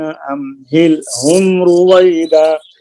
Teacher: ام میں دیر نہیں لگائیں گے، اظہار ہے. ام ہل ہم، جب ام ہل ہم پڑھیں گے تو میم کے سکون کو کامل ادا کر کے ہا کو ادا کرنی ہے، پھر ہل کے سکون کو، لام کے سکون کو کامل ادا کر کے اگلی ہا ادا کرنی ہے، پھر ہم کے سکون کو، میم کے سکون کو کامل ادا کر کے را ادا کرنی ہے.